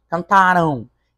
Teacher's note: Esse M tem som de U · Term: ditongo nasal